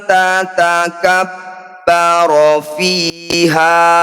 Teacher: Ha disebut mad tabi'i, panjangnya 2 harokat saja. Meskipun dihentikan, tetap 2 harokat.